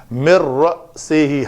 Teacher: حمزہ ساکن ہے، جھٹکا سے ادا کریں گے۔ مر سے ہی یہاں پہ جھٹکا آتا ہے جب آپ حمزہ ساکن کو ادا کرتے ہیں۔